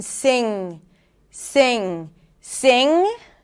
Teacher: The back of the tongue is up. You're closing. The air comes out through the nose. That's the ng consonant as in sing. · Okay, we actually have a nasal sound here where we block the air. So, think of you trying to pronounce the G sound, but the air can't come out. So, it's going to come out through the nose. The back of the tongue is up.